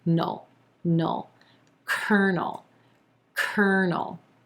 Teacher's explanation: our second syllable is the N consonant and the dark L mushed up together.